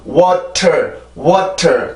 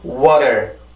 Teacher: 강하게 눌러서 T 발음처럼 내는 게 아니라 살짝 치기만 하는 거죠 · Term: 플랩 사운드